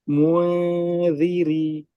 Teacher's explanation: জিহবার অবস্থানটা মাঝামাঝি থাকবে মানে আপনি দালের মাখরাজের দিকেও নিতে পারবেন না আবার নুনের মাখরাজের দিকেও পুরোপুরি রাখতে পারবেন না